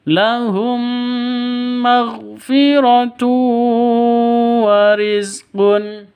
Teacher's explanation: Tanwin bertemu dengan wawu, cara bacanya masuk ke wawu disertai dengung 2 ketukan karena idgham bi gunnah.